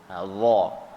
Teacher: Tapi sifat dia antaranya salah satu sifatnya adalah isti'la. Masa kita sebut huruf dha tu, pangkal lidah kita terangkat.